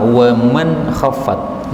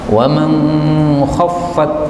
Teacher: nun ketemu kha, ini biasanya kan izhar jelas, tapi Abu Ja'far membacanya dengan ikhfa.